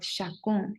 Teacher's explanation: the ch sound is not very common in French. You usually have it sound more like a sh